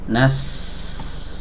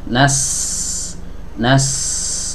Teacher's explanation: di antara sifat yang dimiliki huruf Sin ini adalah sifat hams dan juga ya udaranya mengalir